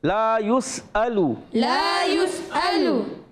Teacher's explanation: حمزہ کی ادائی کریں گے, عین کی آواز نہیں آنی چاہیے